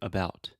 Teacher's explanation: short, it's really soft. I'm reducing the stress and I'm putting the stress on the bout. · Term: schwa